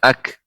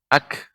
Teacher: Ini hamas ya, ak. Adanya awalnya menekan ak, baru memantul ak, tapi cepat.